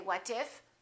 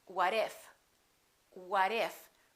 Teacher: when the t is between two vowels it becomes a fast D